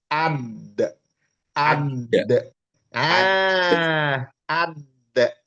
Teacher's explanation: Itu jim. Kalau dal, kalau dal ujung lidah. menekan langit-langit atas di belakang gusi gigi seri atas